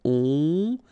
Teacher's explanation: Final S not pronounced. O and N together, nasal.